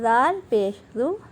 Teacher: زال آپ نے زبان کی نوک کو اور ثنایا علیہ کے کنارہ آپ نے استعمال کرنا ہے۔